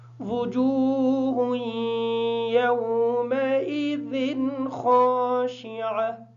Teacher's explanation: یومئذ کی ذال جو ہے اس کی تنوین کا غنہ نہیں کریں گے کیونکہ اس کے بعد حروف حلقی میں سے خا آ گیا ہے.